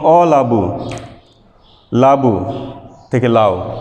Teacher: এখানে একটি অ স্বরধ্বনি ছিল যেটি লোপ পেয়েছে, এবং যেহেতু এটি শব্দের শুরুতে লোপ পেয়েছে এজন্য এটি হচ্ছে আদি স্বরলোপ।